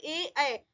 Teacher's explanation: होठ गोल नहीं हो रहा है, इसलिए ये आवृत्ता मुखी होंगे।